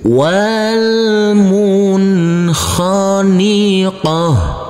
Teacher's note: huruf ta marbutoh karena kita wakafkan maka berubah menjadi huruf ha